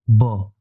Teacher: जब आप ब शब्द का उच्चारण करेंगे तो आप पाएंगे कि आपके जो दोनों होंठ हैं वो आपस में स्पर्श कर रहे हैं। ब ऊपर वाला होंठ भी और नीचे वाला होंठ भी।